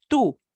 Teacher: Our English way of saying that, like the number two, yeah, it sounds a little bit like our number two, except we tone down that puff of air with the T.